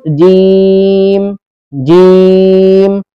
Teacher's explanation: जीम का मखरज है जबान का बीच और उसके मुकाबिल ऊपर का तालु, ये जीम का मखरज है।